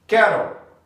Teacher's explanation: o L passa a ser uma consoante silábica, já que no inglês se conta sílabas através dos sons de vogais. Então temos cattle, uma palavra de duas sílabas.